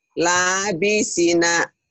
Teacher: La-nya panjang, si-nya panjang.